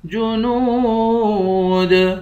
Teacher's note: نون کو واو کے ساتھ ملا کر واو کو بھی ایک الف کی مقدار کھینچ کر پڑھیں گے